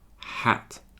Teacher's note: when you say hat, you have to smile more. Okay, it's more tense in your cheeks, and your tongue is touching your bottom teeth.